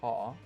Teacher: To adopt a British accent, drop the R sound after vowels. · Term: Nonroticity